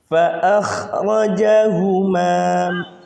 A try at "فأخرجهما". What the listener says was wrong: Jadi pertama pangkal lidah antum kurang naik sehingga bunyi intoknya kurang tebal sedikit. Terus yang kedua, ingat-ingat itu rakhwah.